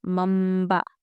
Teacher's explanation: تنوین و نون ساکن کے بعد با آئے تو نون کو میم سے بدل کر غنہ اور اخفا کے ساتھ پڑھیں گے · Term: اقلاب